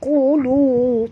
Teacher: qaf tebal, jangan nipiskan dia ya